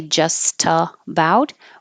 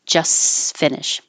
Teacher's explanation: so we don't have to say the T here in just we can drop it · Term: drop the T